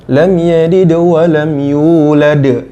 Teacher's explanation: dihukumi qolqolah sugro. Gitu, kecil. Jadi enggak boleh pantul habis. Lam yalid walam, tapi harusnya lam yalid wa, langsung wa.